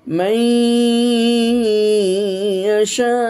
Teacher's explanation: নুন সাকিনকে আপনি ইয়ার মধ্যে ঢুকায় দিয়েছেন, ঠিক আছে, কিন্তু আবার আপনি গুন্না করছেন, অবস্থান করছেন। এই যে অবস্থান করছেন, এই অবস্থানের পরিমাণটা হলো একালি পরিমাণ বা হারাকাতেন। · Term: ইদগামের উদাহরণ গুন্না সহকারে